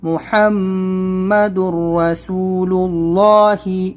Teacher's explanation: یہاں پر آپ دیکھیں ہا کو ادا کریں، میم کے اوپر غنہ کریں، اور یہاں پر ادغام کریں گے، اور را کو موٹا پڑھیں گے کیونکہ را کے اوپر زبر ہے، اور حروف مدہ ہے یہ، اور اللہ، اللہ ورڈ ہے، اس سے پہلے پیش ہے، تو اس کو بھی ہمیں موٹا پڑھنا ہے۔